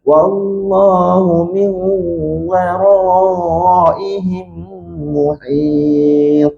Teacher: Ini idgham maal gunah yang cantik. Masuk serta dengung panjang. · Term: idgham ma'al gunnah